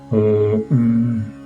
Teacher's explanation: it is the nasalized labial consonant M, and therefore the mantra is pronounced Om.